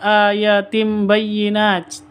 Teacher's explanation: Tanwin bertemu dengan ba, bacaan iklab. Cara bacanya seperti idgham bi gunnah, dengung.